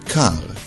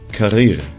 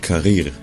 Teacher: Most Israelis pronounce it with a guttural R sound, similar to the French R, but some make the trilled R sound, as in Spanish and Italian.